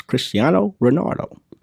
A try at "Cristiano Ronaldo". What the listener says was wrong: It's Ronaldo, for sure.